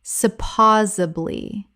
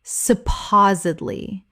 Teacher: Four syllables with the stress on the second. The D must be pronounced.